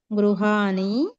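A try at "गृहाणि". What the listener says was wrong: నకారం పలకాలి, నకారం పలకూడదు. అక్కడ గృహాని అనకూడదు, గృహాణి అని అనాలి.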